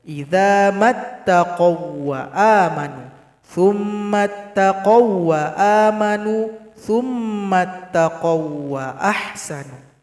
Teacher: dibaca pendek tanpa berdengung. Idza mattaqaw wa amanu, tsumma taqaw wa amanu, tsumma taqaw wa ahsanu. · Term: sifat lin